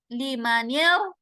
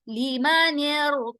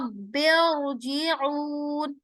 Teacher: ये जो हमजा है ये नीचे गिर जाएगा, लीमानियर, और रा मोटा हो जाएगा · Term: कसरा मुफस्सल